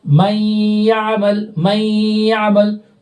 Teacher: اور چونکہ اس والے ادغام میں غنہ ہوتا ہے، جیسے یہاں دیکھیے نون ساکن کے بعد یا آ رہا ہے نا ان میں سے، تو من یعمل، من یعمل، تو نون کی آواز آ رہی ہے غنے کے ساتھ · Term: ادغام ناقص